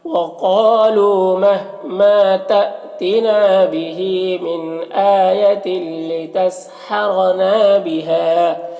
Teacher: را کو پر زبر ہے تو را کو پر پڑھیں گے